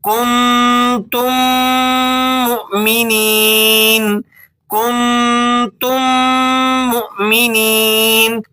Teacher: واضح رہے کہ یہ قاعدہ صرف میم کے ساتھ ہی ہوتا ہے، اور جب ہم اسے پڑھیں تو ہونٹوں کو اچھی طرح بند کر کے میم کی غننے والی آواز پیدا کریں، اور اس کا دورانیہ لگ بھگ جو ہے وہ 2 حرکت کے برابر ہوگا۔ · دونوں میم آپس میں مل جاتے ہیں اور ایک لمبے سے میم کی آواز پیدا کرتے ہیں، اسے کہا جاتا ہے ادغام شفوی۔